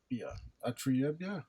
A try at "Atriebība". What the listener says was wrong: Biba. You have to end it with Biba.